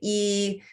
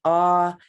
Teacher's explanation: And then the vowel valley, going from that tight smile, that E, and our mouth drops down bit by bit as we get down to that most open ah, and then our lips round as we close.